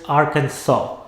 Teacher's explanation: the last s is silent